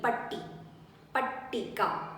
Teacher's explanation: So when you say T, so there is a 2 letters, double consonant, you have to give a little stress for the T